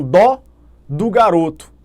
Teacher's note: Estou com dó do garoto. Então o primeiro dó é tônico, termina em O, recebe acento, o outro é átono.